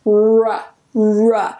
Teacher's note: That W, that W is silent. We don't pronounce it.